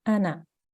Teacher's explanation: you need to make sure you don't elongate that noon